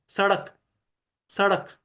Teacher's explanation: जैसे कि स्वर के ऊपर तैरता हुआ, उछलता हुआ आ रहा है, जैसे र में थोड़ी कंपन है, वैसी कंपन महसूस होती है। सड़क, सड़क, है ना, तो उसमें ड जो था वो ड ऐसे जैसे थोड़ा डांस कर रहा है। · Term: उत्क्षिप्त व्यंजन